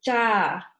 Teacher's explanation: A woman answers yes with the cha, unaspirated, the A, lengthened